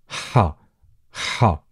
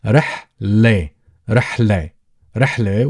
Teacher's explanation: the letter ha is a uvular letter, is pronounced from the back of your throat. So ha, ha, very much when you eat some spicy food and you're trying to catch a breath because of the spiciness or the hotness.